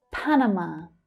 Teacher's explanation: The first and the last syllables there are quite strong.